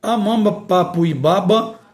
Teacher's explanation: Temos aí essa pronúncia bilabiais, dois lábios. No ponto de articulação se formam as bilabiais, que é o encontro dos lábios